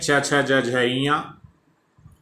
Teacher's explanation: तालव्य वर्ण है च छ ज झ ञ